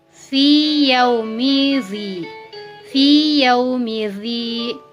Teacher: Hukum idgham mutamatsilain ini terjadi pengecualian pada hal berikut ini, seperti ya sukun bertemu dengan ya, tetap dibaca fi yaumizi, fi yaumidzi. Artinya ya sukun tetap ya sukun dan ya hidup tetap ya hidup. Tidak ada yang ditasydidkan. Di sini tidak berlaku hukum idgham mutamatsilain.